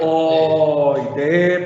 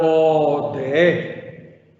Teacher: Puedo leerla oide, bravo, o puedo leerla ode, haciendo el acento al final.